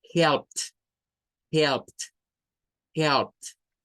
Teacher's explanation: Cuesta un poco escuchar la terminación T porque es bastante suave, es un sonido no vibrante.